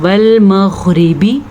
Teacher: تو غین کو ہم موٹا یعنی کہ پر کر کے پڑھیں گے لیکن یہاں پہ جھٹکا نہیں دینا۔ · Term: حروف مستعلیہ